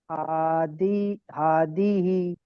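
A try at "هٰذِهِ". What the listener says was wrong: হাদি নয়, জি, হাজিহি।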